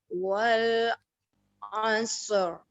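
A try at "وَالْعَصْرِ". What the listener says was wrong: Ya, shotnya lebih tebal lagi. Jadi roknya di sini dibaca tebal. Kaidahnya karena roknya disukunkan, wal asr disukun, dimatikan, kemudian di belakangnya disukun, kemudian di belakangnya ada fathah.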